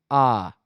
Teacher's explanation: और खुले रहेंगे कब जब आप बोलेंगे आ आप बोलिए आ आ बोलेंगे तो क्या होगा पूरा ओठ आपका खुला रहेगा